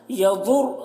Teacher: ضاد کو پر پڑھیں گے اور را کو بھی یہاں پر پر پڑھیں گے